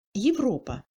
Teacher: Le A est encore plus réduit en longueur et devient plus court, mais il est en plus alterné, il change de timbre et ressemble au son français E muet. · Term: second degré de réduction